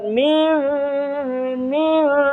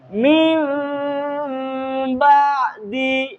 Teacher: মিম, আপনি নাক ধরলেও গুন্না হবে, মুখ ধরলেও গুন্না হবে, মিম গুন্না হবেই। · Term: ইকফা গুন্না